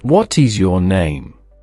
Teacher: What ends with a T, a consonant. Is begins with an I, a vowel. So, that T's sound links directly to the I. It becomes "What is your name?" Repeat after me. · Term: connected speech